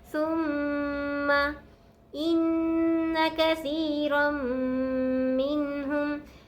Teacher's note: سا کو میم مشدد سے ملائیں گے، غنہ کریں گے